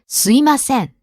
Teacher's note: some people leave out the M sound. Yeah, you hear this quite a lot.